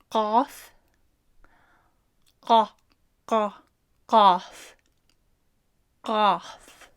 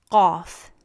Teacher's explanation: this sound is made by touching the back of your tongue against the uvula. That's that dangly thing at the back of your throat.